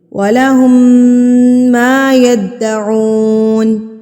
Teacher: میم مشدد پر ہم غنہ کریں گے، یعنی کہ ناک میں آواز کو لے کے جائیں گے